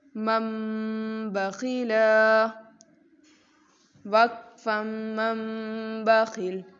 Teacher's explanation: یہاں نون کی آواز کو ہم نے میم سے بدل دیا ہے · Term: اقلاب